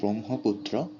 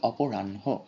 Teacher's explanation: বিশেষ করে হয়ের সাথে যখন ম বা ন যুক্ত হয় তখন দেখা যায় যে উচ্চারণ আগে পিছে হয়ে যায়